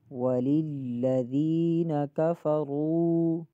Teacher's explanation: کاف کو بھی نہیں کھینچنا، فا کو بھی نہیں کھینچنا، اور را کو ایک الف کی مقدار کھینچیں گے۔